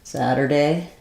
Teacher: in American English we'll flap this first T